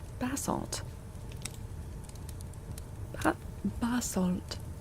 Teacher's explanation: the British pronunciation puts the the emphasis on the first syllable